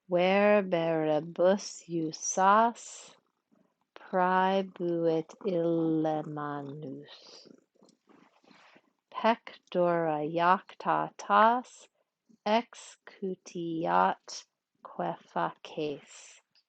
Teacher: the end of the line, always the same. Long, short, short, long, short, short, and counts as long. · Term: pentameter